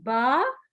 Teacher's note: دونوں ہونٹوں کو ملا کر جب الگ کرتے ہیں تو با ادا ہوتا ہے